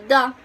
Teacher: sound uh duh uh which is voiced uh dental fricative um it's voiced because when we make this sound the vocal cords vibrate